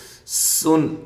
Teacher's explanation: سین کو باریک سیٹی کے ساتھ